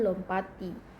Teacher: Dalam pengimbuhan sufiks i pada dasar lompat terjadi penggeseran di mana fonem t yang semula berada pada suku kata pat menjadi berada pada suku kata ti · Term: penggeseran fonem